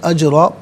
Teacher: دو زبر کی ترمیم وقف میں الف سے چینج ہو جاتی ہے، را کو پر کر کے پڑھا جائے گا دونوں صورتوں میں۔